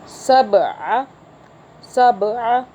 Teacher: با پہ آپ جھٹکا دیں گے، قلقلہ کا حرف یعنی کہ جھٹکے کا حرف ہے با